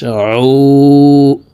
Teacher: আইন হরফের উচ্চারণ হলকের মধ্যখান থেকে চাপ দিয়ে পড়তে হবে।